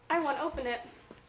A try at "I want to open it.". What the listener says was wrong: I'll open it. That's what that sounded like, okay? I'll open it. I'm exaggerating, but this is the diction part. So it's I want to open it.